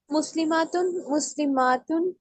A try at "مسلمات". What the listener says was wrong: اس کو تھوڑا کھینچ کے پڑھیں گے نا، ماں پڑھیں گے نا اس کو. مسلماتن مسلماتن ایسے.